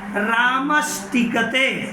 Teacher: रामस में जो दंत स है उसकी संधि जब की गई ट के साथ तो दंत स मूर्धन्य स में बदल गया, परिवर्तित हो गया, रूप ऐसे बन गया।